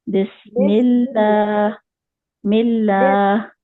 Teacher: मीम के नीचे जेर है तो अल्लाह का नाम जो है मोटा नहीं पढ़ेंगे, बारीक पढ़ेंगे